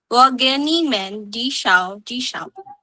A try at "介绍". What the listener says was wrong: Okay, 介绍, J-I-E, there's an E, 介绍.